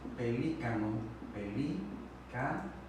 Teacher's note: la que suena con mayor intensidad es la antepenúltima. Estaremos hablando de una sílaba esdrújula.